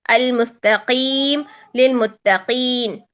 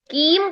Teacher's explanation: قاف غین اور خا ہم کہتے ہیں بالکل باریک ہو جاتے ہیں، لیکن باریک ہونے کا مطلب یہ نہیں ہے کہ وہ کاف بن جائے گا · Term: قلقلہ